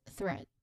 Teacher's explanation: the first sound is the voiceless th sound. Right? When we try to say voiceless th sound, it's when we try to touch our neck and say or pronounce the sound, there's no vibration at all.